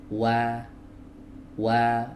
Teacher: huruf wau di sini adalah wau ghairu maddiyah. Berarti dia keluar dari dua bibir ya. Dua bibir yang dimajukan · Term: wawu ghairu maddiyah